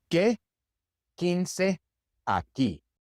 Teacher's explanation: In Spanish, the combination QU just sounds like a K. The U is silent.